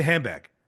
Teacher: the D gets dropped